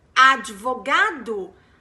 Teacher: spanish speakers there is a d and you say advocate and that v sound needs to be pronounced as a v because spanish speakers pronounce the v as b